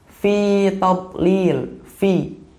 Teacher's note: Jadi kayak ada bunyi gitu karena bibir bawah bertemu dengan gigi seri atas